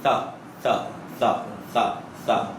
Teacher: زبان کی نوک باہر نکلے گی, اوپر والے دانتوں کو لگے گی اور باہر نکلے گی